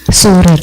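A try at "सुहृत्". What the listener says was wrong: It sounds like you said Sura. It's Surit.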